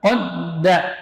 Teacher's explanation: Tapi huruf dal ini huruf tipis. Kalau qafnya tebal.